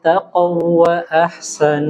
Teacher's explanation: jadi huruf qof usahakan tebal